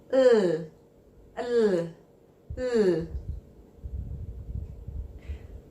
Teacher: The tip of your tongue touches the roof of your mouth, just behind the top teeth. The air passes the side of your tongue, and there should be voicing on your throat. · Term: L sound